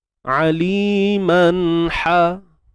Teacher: ha pedas sempit tengah kerongkong